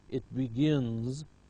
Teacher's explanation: Remember, all nasals are voiced, so it's followed by z